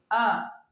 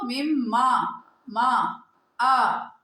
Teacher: حمزہ زبر آ منہ کے خالی حصے سے، جوف دہن سے نکلتا ہے، اس میں سے زبان یا دانتوں کا کوئی تعلق نہیں ہوتا۔